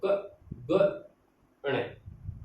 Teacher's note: ठीक है, इसके अंदर कौन कौन से आते हैं, अल्प प्राण यानी पहला, तीसरा और पांचवा। यानी अल्प प्राण यानी कम प्राण लगे उसको बोलने में, कम ताकत लगे